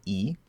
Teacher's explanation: we know e is made with the front of the tongue okay it's going to be high in the mouth